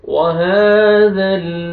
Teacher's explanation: हा को आपने खींचना है, खड़ा जबर है, हा पढ़ना है, हा में आपका साउंड मिक्स ना हो।